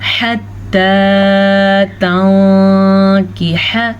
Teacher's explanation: حتی ہا کے مخرج پہ دھیان فرمائیے گا. نون ساکن کے بعد کاف حروف اخفا میں سے ہے تو نون ساکن کو ہم چھپے ہوئے غنّے کے ساتھ پڑھیں گے